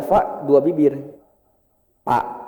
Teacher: ada beberapa orang seperti orang Sunda, saya juga orang Sunda, itu baca fa 2 bibir